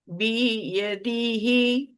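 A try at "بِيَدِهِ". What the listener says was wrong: बी यदि नहीं करना है, बा को लंबा नहीं करें।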